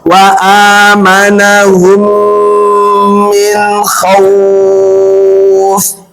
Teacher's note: idgham mimi kalau ada mim mati bertemu mim bacanya tadi diapain? Dighunnahkan mesti ditahan.